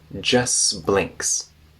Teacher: now the T after s disappears